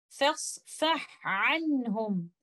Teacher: Letter ha is a letter of hams and rakhawa, while letter ain is a letter of jahar and tawassut, but we recite both of them clearly like this.